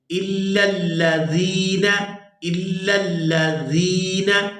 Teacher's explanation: جب بھی یا مدہ آ جائے تو اس کے ساتھ جو بھی حروف ملیں گے ان کو کھینچ کر ادا کیا جائے گا. یہاں زال جو ہے یا مدہ کے ساتھ مل رہا ہے تو اس کو کھینچ کر ادا کریں گے